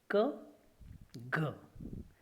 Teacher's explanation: the back part of the tongue touches to the soft palate. When the tongue is removed, the compressed air is released suddenly with an explosive sound, and that is what it is called as explosive sound. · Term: velar sound